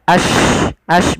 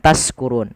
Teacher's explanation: Yaitu suara shinnya dia ash bukan taskurun. Jangan diganti dengan sin. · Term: tafasyi